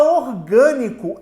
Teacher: A palavra orgânico é proparoxítona, pois a sílaba tônica é a antepenúltima.